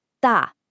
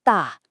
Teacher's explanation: It's the fourth tone, which is a sharp, falling sound. Think of it like a quick, decisive command.